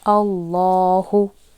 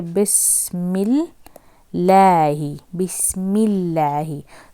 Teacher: ठीक है, तो whenever you have got fatha, ठीक है, whenever you have got fatha associated, no, like previous letter को fatha है, then the lam is to be read, pronounced heavily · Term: heavy